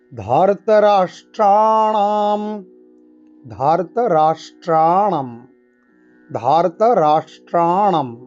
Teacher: এই রাষ্ট্রাণাম সব কিন্তু মূর্ধাবর্ণ, তাই একেবারে জীবকে উল্টো করে আমরা উচ্চারণ করব।